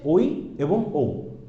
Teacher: এই ওই এবং ওকে যদি আপনি একটু ভাঙেন, দেখা যাবে কি ওইকে কি হচ্ছে ও যোগ ই, ওকে কি হচ্ছে ও যোগ উ। তো এই যে বিষয়গুলো, এগুলোকে হচ্ছে আমরা, এই ধ্বনিগুলো হচ্ছে দুটো একত্রিত হয়ে উচ্চারিত হচ্ছে বলে আমরা তাকে বলি দ্বিস্বরধ্বনি।